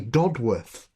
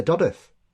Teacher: We don't pronounce it. There's no need for that W there.